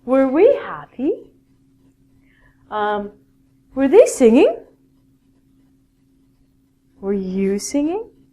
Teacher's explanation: at the end of a question in english it's a rising intonation